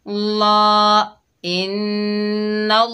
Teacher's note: नून के ऊपर ज़बर है, आगे अल्लाह का लाम है, नून को अल्लाह के लाम से मिलाएंगे, अल्लाह का लाम ज़बर की वजह से मोटा पढ़ा जाएगा, जैसे नल नल। लाम के ऊपर खड़ा ज़बर, एक अलिफ की मिकदार खींच कर पढ़ेंगे